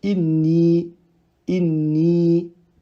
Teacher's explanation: Donc là, on a un autre exemple pour la calligraphie du ya sans point, qui est un ya voyelle longue. Le noun avant lui possède une kasra, du coup forcément, ce ya sera un prolongement de deux temps